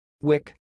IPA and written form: wɪk (WICK)